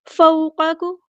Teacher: वाव लीन आ गई है तो नरमी से मोड़ेंगे